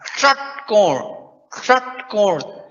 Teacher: जीभ को और ज्यादा मोड़ना है मुर्धा तक ले जाना है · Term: मुर्धन्य स